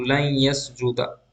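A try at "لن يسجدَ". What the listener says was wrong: लन यसजुदा, लन यसजुदा, लन यसजुदू, लन लन तसजुदा, लन तसजुदा, लन लन यसजुदना। लन यसजुदा, लन यसजुदा, लन यसजुदा।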